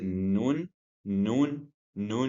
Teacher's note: the tip of the tongue hitting the upper gum just behind the upper teeth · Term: articulation point of the noon